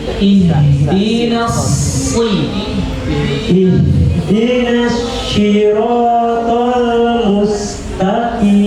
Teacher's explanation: Jadi yang keluar suara s, bukan sya ya, bukan sya yang titik tiga, bukan, tapi sin, seperti huruf sin.